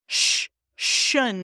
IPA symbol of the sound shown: ʃ